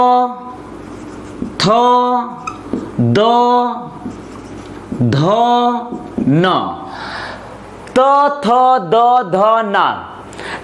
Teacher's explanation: अगला है दंतव्य, तो थ द ध न, त थ द ध न। जब किसी वर्ण को उच्चारित करते समय जो जीभ है ऊपर और नीचे दोनों दांतों के बीच में आती है तो इसे कहा जाता है दंतव्य। दांत का जब जो जीभ है वो दोनों ऊपर और नीचे दोनों दांतों के बीच में आती है तो इसे कहा जाता है दंतव्य, जिसका उदाहरण है तो थ द ध न, अर्थात तो थ द ध न कहलाएगा दंतव्य।